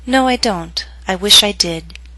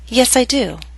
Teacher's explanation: Both will be read with falling intonation.